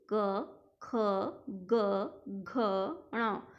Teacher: जितने भी क वर्ग के व्यंजन हैं, जितने भी क वर्ग के वर्ण हैं, जब मैं इनको बोलूँगी तो वो गले से बोलूँगी, कंठ से बोलूँगी